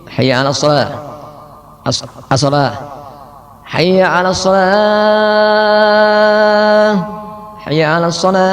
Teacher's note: menghilangkan tasdid sehingga menjadi hayya 'alas shalah